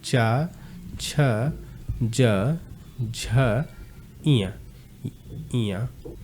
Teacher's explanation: ये च पूरा वर्ग कहां से बोला जाता है? तालु से बोला जाता है।